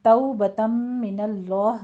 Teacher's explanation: توبۃ من اللہ میں تو میں واو لین ہے اور آگے تنوین کا قاعدہ ادغام الغنہ کریں گے